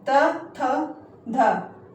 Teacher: जब हम त बोलते हैं तो हमारी जो जीभ है वो जो हमारे दंत से जो है टकराती है। त, थ, ध। जब हम ऐसे बोलते हैं तो हमारी जीभ दंत से यानी दांतों से टकराती है तो उनका उच्चारण जो है दंत से जो है होता है।